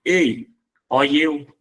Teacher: quando você pronuncia ei e eu, você está fazendo a pronúncia fechada